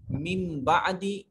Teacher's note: یہاں نون ساکن اس کے بعد با، اور اس نون کو چھوٹی میم سے بدل دیں گے، اقلاب کا قانون کہیں گے اس کو، اور یہ ہم بعد میں تجوید میں جا کے پڑھیں گے۔